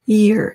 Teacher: 이 ear은 y가 앞에 있어서 입 모양이 모아진 상태에서 시작하시면 됩니다. ear 이렇게요. Okay, so that's the beer sound.